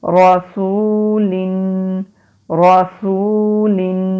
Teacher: صبورن، را زبر را، سین پیش واو سو، لام دو زیر لن، رسولن رسولن، واو سے پہلے پیش حروف مدہ ایک الف کے برابر لمبا